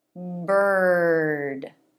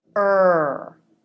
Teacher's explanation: always followed by the r consonant but it's just one sound R made with the front of the tongue pulled back and up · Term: r vowel